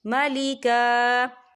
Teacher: وقف کی صورت میں ایک زبر پڑھا جائے گا، دو زبر نہیں پڑھے جائیں گے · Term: وقف مطلق